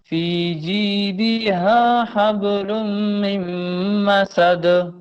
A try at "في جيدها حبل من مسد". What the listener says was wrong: تھوڑا غنہ کریں، یہ جو ہے من اس کو ناک میں رکھیں.